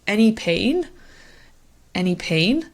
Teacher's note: and usually because it's so short the intonation is important so if you're going with a rising intonation that implies that you're asking a question in English